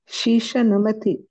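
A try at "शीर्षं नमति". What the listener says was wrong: Sheer, the repa is missing. Sheershaha. Sheershaha namati.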